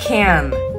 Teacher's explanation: trong cái từ can này thì người ta lại có xu hướng đọc là e, cái âm e nó dẹt và nó bè hơn một chút, can. Và theo như kinh nghiệm cá nhân của mình thôi nhá, thì mình thấy rằng là nếu như âm a đứng trước cái âm cái âm trễ hình chữ n này, thì nó sẽ được đọc là e, đọc bè và dẹt ra hơn. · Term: âm e dẹt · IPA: /æ/